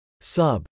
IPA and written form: sˈʌb (sub)